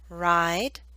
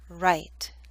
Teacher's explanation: The I in ride should be longer because the D is a voiced consonant.